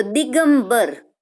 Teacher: તો અહીંયા જ્યારે સંધિ થાય છે ને ત્યારે કનો ગ થઈ જાય છે. બરાબર, અઘોષમાંથી ઘોષ બની જાય છે. તો ક ના બદલે એ જ લાઈનનો, બરાબર, કનો ગ થઈ જાય છે.